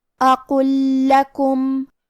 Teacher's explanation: کلمت لکم یہاا حکم ہے ادغام، تو ہم پہلے لام کو دوسرے لام میں ملا کے ایک ہی لام لیکن تشدید کے ساتھ پڑھیں گے. اقل لکم.